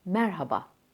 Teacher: H harfini yutmadan Merhaba baskılı bir şekilde vurgulu bir şekilde